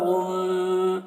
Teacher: میم مشدد تو غنہ کر رہے ہیں